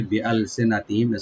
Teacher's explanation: মিম সাকিন এখানে জাহার হবে, একটু বেশি করে জাহার করতে হবে